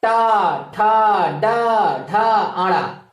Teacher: और टा वर्ग का उच्चारण स्थान मित्रों मूर्धा होता है।